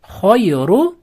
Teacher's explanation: Ru bu yerda rni ustida domma bo'lgani uchun yug'on o'qiladi.